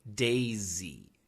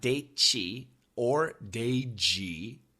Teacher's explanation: S plus Y is usually pronounced quite clearly, but it does sound like a ZY. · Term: ZY sound